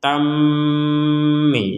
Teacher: Jadi di rongga hidung kita berdengung. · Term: dengung 100%